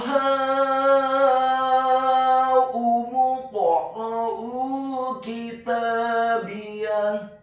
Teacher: Dan di akhir ayat huruf ta marbutohnya diubah menjadi huruf ha yang tafkhim yang tebal dan dibaca sukun